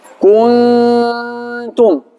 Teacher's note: Nuk thash kun, nuk e ngrejta gjuhën, nuk e shqiptova nën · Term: fshehje